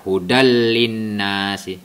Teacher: Hudal linnas dibaca dengan cara tidak berdengung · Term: Idgham bila guna